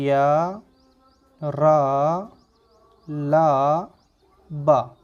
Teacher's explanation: अब अंतःस्थ व्यंजन की बात करें तो इसकी डेफिनेशन कहती है कि अंतःस्थ व्यंजन वो व्यंजन होंगे जिनको हम उच्चारित करें तो हमारा मुंह संकुचित हो जाता है, यानी कि छोटा हो जाता है और फिर भी हवा उसके माध्यम से बीच से निकल जाती है